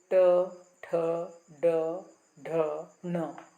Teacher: तालु से थोड़ा सा पीछे का हिस्सा वहाँ पर अपनी जीभ स्पर्श होती है। जब हम ट ठ ड ढ न बोलते हैं तो उसको कहते हैं, जहाँ पर अपनी जीभ टच होती है, स्पर्श होती है, उस जगह को मूर्धा कहते हैं। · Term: मूर्धन्याः